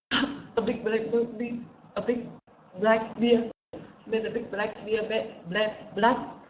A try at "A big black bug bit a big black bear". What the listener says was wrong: A big black bug bit a big black bear. Bear, yeah, not a beer, not a beer Hanoi or a LaRue or a Tiger. Bear.